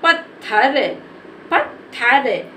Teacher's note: इसको बोलने में ज्यादा समय नहीं लेंगे और इसके उच्चारण में आ साउंड भी नहीं बोलेंगे तो इसको हम जल्दी से पढ़ देंगे पत्थर पत्थर इसको क्या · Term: आधा ता